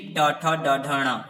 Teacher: ये मूर्धा से बोले जाते हैं